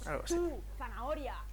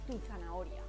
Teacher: tú es una palabra atona es decir no tiene acento prosódico